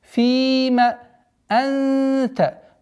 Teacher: Правило ихфа назализации в размере двух огласовок